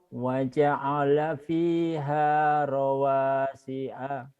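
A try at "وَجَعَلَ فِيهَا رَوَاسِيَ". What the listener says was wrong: rawasiya, bukan si a, karena itu ya bukan hamzah. Kadang-kadang memang ada hamzahnya. Kalau ada hamzahnya dibacanya hamzah.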